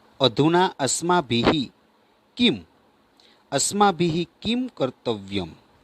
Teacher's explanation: આ વિસર્ગનો ઉચ્ચારણ કેવો? સહેજ હ વર્ણના જેવો થાય છે